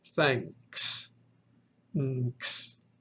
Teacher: these are nasal yama, where the first yama combines with the following velar, and you'll have that ng sound when they're pronounced.